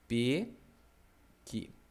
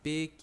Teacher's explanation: a palavrinha pequi é uma oxítona